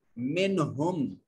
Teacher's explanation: منہم، آپ ہم کر کے نہیں پڑھ سکتے اس کو. منہم، نون ساکن پر اخفا یعنی غنہ ہونا تھا، مگر اس کے بعد آنے والے حرف ہا حرف حلقی نے اسے غنہ سے منع کر دیا. اب یہاں صرف اظہار ہوگا.